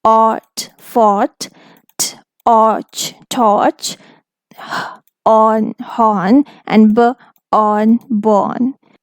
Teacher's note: the British pronunciation in which we don't pronounce R, and then I'll also say them in the American pronunciation in which we pronounce R.